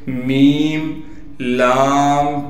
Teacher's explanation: میم کو پھر ہم ڈائریکٹ لام سے ملا دیں گے اس لیے کہ لام پر تشدید ہے، لام پر تشدید ہونے کی وجہ سے تھوڑا ٹھہراؤ رکھنا ہے۔